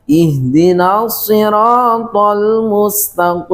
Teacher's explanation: disebabkan apa karena huruf ta mempunyai sifat istifal yaitu tipis kemudian huruf qnya mempunyai sifat istila tebal karena terangkatnya pangkal lidah ke langit-langit sehingga huruf yang tipis terpengaruh menj tebal sehingga dibaca ihim ihdin